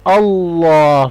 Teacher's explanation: تو ہم اللہ کے نام میں یہ جو لام ہے اس کو بولڈ پڑھیں گے